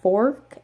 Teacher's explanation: in the variety of English that I speak I say fork and there's like an R sound in there